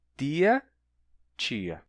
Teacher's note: Oito, oito. E em tia, a gente tem uma palatalização regressiva. O i influencia a consoante que vem antes.